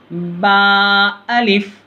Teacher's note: दोनों होठों की तरी वाली हिस्सा, जो दोनों होंठ के अंदर से भीगे हुए हिस्से रहते ऊपर के और नीचे के, उन दोनों को मिला के पढ़ना है बा में, और सख्ती नहीं होने देना ज़्यादा। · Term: बा का मखरज